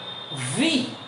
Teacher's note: উপরের দাঁতের মানে নিচে ঠোঁটের উপরে দেখেন ভি